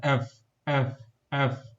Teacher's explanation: তোমার উপরের দাঁতটি সে নিচের ঠোঁটের সাথে লেগেও তারপর উচ্চারণ হচ্ছে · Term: এফ এফ সাউন্ড